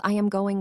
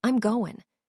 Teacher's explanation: The am contracts to just m. Even the g in going disappears in casual speech.